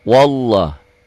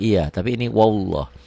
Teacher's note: lafaz Allahnya dibaca tebal, kenapa tebal? Tafkhim, taglid, karena sebelum lafaz Allah baris di atas. Wallah, ini mad asli.